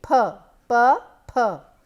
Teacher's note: Purr is a bilabial sound where we are using two of our lips